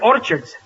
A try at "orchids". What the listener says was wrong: It's not orchards, it's orchids. The CH is pronounced like K.